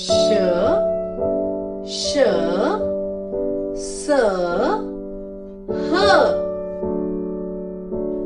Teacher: ऊष्म व्यंजन वे व्यंजन है जिनका उच्चारण करते समय हवा मुख से रगड़ खाती हुई और धीरे धीरे बाहर निकलती है। आपको यह जानकर आश्चर्य होगा कि ऊष्म व्यंजन के उच्चारण करते समय निकलने वाली श्वास अन्य व्यंजनों के उच्चारण के समय निकलने वाली श्वास की अपेक्षा अधिक गर्म होती है और इसी कारण से इन्हें ऊष्म व्यंजन कहा जाता है।